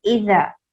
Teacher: ज़ाल को जब पढ़ा जाएगा तो टंग को दोनों तीत के बीच में लेकर आएंगे, ऐसे पढ़ेंगे इज़ा, ठीक।